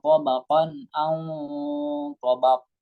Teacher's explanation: Nah, ini namanya qalqalah baqo. Qalqalah kubro karena berada di akhir kalimat. Tabaqo harus jelas.